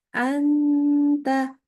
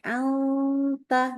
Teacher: dengungnya tipis Kenapa karena pangkal lidah turun